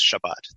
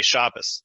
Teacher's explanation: They say Shabbos, which notice it shifts the T sound to an S, and it shifts the syllable emphasis to the first syllable. And it sounds more like German.